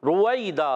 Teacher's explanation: रा पर पेश आने की वजह से रा पूर हो जाएगी